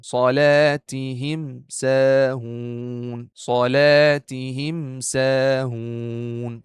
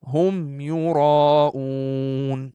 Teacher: We will pronounce just the Meem clear with no Ghunnah, with nothing at all. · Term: Meem Sakin